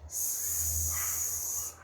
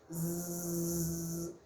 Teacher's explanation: Então, se você pega e põe a sua palma da mão aqui na região da glote, aqui na região da sua garganta, e você produz esse som do silêncio, você vai perceber que não tem vibração. E se não tem vibração é porque esse som é desvozeado. Ao passo que o som que a gente faz, aquele zumbido da abelha, por exemplo, é um som vozeado. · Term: som desvozeado